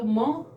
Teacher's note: और मैं बोलेंगे तो म ओष्ठ, यानी कि होठों को थोड़ा सा मिलाते हुए और नासिका से ध्वनि निकाल देंगे।